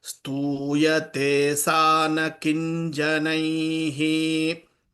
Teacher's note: Kim janai will become kin janai because of anuswaram.